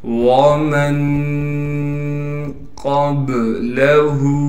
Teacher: وَمَن قَبْلَهُ، میم کو نون سے ملائیں گے اخفا یعنی غنہ کے ساتھ، قاف کو موٹا کر کے پڑھیں گے، پھر قاف کو با سے ملا دیں گے اس لیے کہ با ساکن ہے، اور با حروف قلقلہ میں سے ہونے کی وجہ سے با پر قلقلہ کیا جائے گا